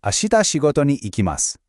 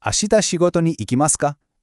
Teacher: All we did was add ka to the end, and we say it with a bit of a rising tone.